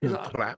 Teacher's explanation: the rolling R on a very short word is a little bit strange